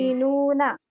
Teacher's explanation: حمزہ ساکنہ کے پڑھنے میں جھٹکا ہوتا ہے · حمزہ ساکنہ کے پڑھنے میں دھکا ہوتا ہے